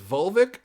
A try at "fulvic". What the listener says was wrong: Not vulvic. You just said vulvic, and vulvic sounded like a disease of the vulva.